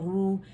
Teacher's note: usually را کو ہم رو کر کے پڑھتے ہیں, باریک کر دیتے ہیں, لیکن آپ نے کیا کرنا ہے, اس کو موٹائی سے پڑھنا ہے